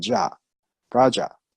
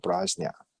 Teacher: Okay, so it's very difficult for a lot of people to say jnia. So sometimes, different region, they just say ja, praja, instead of prajna